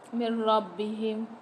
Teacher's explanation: نون ساکن کے بعد را مشدد آ رہی ہے، یہاں پر ہم غنہ نہیں کریں گے، ادغام کر کے پڑھیں گے